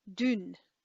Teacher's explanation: So the u becomes u with when there's an N following it. So it gets nasalized, like there's a nasal quality to the sound, and the U becomes more like a German Ü.